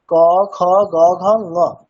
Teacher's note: যখন ঙকারটা বলছে তখন দেখো নাকে একটা প্রেশার পড়ছে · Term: অনুনাসিক বর্ণ